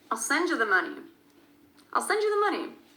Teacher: the most important word in the sentence at the end, which is money, because there's really no other word around it except for the, which is a function word that kind of disappears.